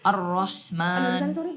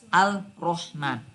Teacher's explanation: alnya tidak terbaca karena melebur ke huruf depannya. Dan huruf depannya kemudian ditasydid. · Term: al-syamsiyah